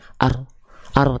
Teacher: huruf ro itu dilafalkan dari bagian punggung lidah